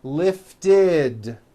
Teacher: if a word ends in a t or a d sound we add the ending id which is a vowel e followed by a d which is voiced so for example the word lift ends with an unvoiced t